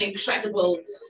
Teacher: she also said incredible with an R sound that I struggle to do. It's like a thing. It's like a rolling R sound.